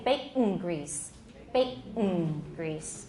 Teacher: turn that alveolar nasal into a velar nasal, so we can say bacon grease.